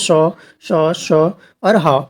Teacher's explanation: इनके उच्चारण में विशेष रूप से क्या होता है, श्वास का घर्षण होता है, यानी जो हम श्वास यूज करते हैं बोलने में, उस श्वास का घर्षण होता है। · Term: ऊष्म व्यंजन